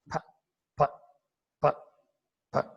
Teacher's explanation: when I pronounce these three sounds with aspiration, this normal voiceless P becomes little bit stronger and aspirated, and that is gradually moving towards Marathi F, but not exactly Marathi F. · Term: aspirated sounds